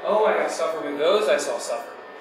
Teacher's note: there's this rising tone at the end of all the words